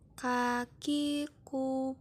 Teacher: cara melafalkannya dengan menyentuhkan pangkal lisan dengan langit-langit bagian belakang